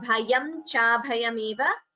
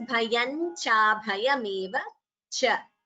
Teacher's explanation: Bhayam anuswara followed by cha. Again, we combine the sandhi and chant it as bhayancha. Instead of bhayam cha bhayameva, we chant it as bhayan cha bhayameva cha.